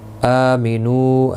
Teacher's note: حمزہ کے اوپر کھڑی زبر ہے، ایک الف کی مقدار کے برابر کھینچ کر پڑھیں گے۔ نو واو مدہ ہے، ایک الف کی مقدار کے برابر کھینچ کر پڑھیں گے۔